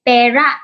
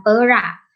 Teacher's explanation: Perak yang menggunakan i taling merujuk kepada logam yang berwarna keputih-putihan, manakala perak yang menggunakan i pepet merujuk kepada keadaan hairan, tercengang ataupun terpinga-pinga.